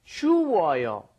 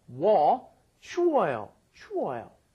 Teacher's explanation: the vowels get combined into a double vowel